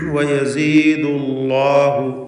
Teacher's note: ലാമിനെ തഫ്ഖീം ചെയ്യണം, തടിപ്പിച്ച് സ്വരഭാരത്തോടെ ഉച്ചരിക്കണം. എന്നാൽ ലാമിൻ്റെ മഖ്റജിൽ ഒരു മാറ്റവും വരരുത് എന്നത് പ്രത്യേകം ശ്രദ്ധിക്കേണ്ടതാണ്.